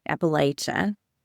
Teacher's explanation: if you're saying it with a long A, Appalachia, the perception is that you are an outsider. You're not from the region.